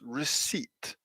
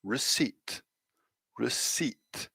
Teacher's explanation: we have a short vowel sound and then second of all we have a long vowel sound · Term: short vowel long vowel